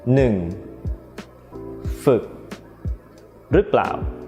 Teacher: the short version of อือ, which is อึ, you also have to do the same thing: don't round your lips, stretch the corners of your mouth